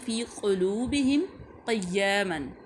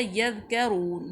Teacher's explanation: قاف جو ہے وہ زبان کی تالو کے نرم حصے سے ادا ہوتا ہے جو نقطوں والا ہے، جو کاف ہے تالو کے سخت حصے سے ادا ہوتا ہے